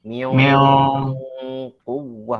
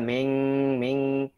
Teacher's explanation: Karena qaf huruf tebal, maka bunyi ikhfanya lebih tebal.